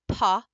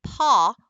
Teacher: we have Paw which is that front vowel ah and then paw which is that back vowel ah